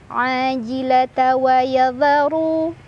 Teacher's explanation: ra dibaca secara tafkhim karena berbaris dhammah jadi ditebalkan.